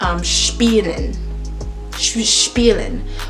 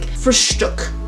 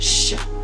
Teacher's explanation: the letter S, paired with the CH or paired with a T or a P, is going to have a sh sound